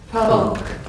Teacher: There's no L. Imagine the L is not there. It's not an E on the end, if you like.